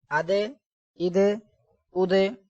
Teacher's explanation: اب دال حروف کلکلا، اس میں کلکلا کریں گے